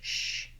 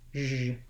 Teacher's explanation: this letter S says the zh sound. So it's like an SH, sh, but with my voice on, zh.